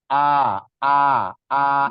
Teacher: Hamzah itu letaknya atau makhorijul hurufnya di pangkal tenggorokan di bawah paling bawah satu makhraj dengan huruf ha ha domir ha Bulat itu satu